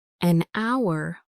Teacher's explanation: the word hour starts with a silent H, so the first sound is a vowel sound, ow. So we say an hour.